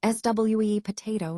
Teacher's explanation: For example, the word sweet potato is frequently pronounced as SWE potato. Notice how the T sound in sweet and potato can sometimes be softened or even dropped in casual conversation.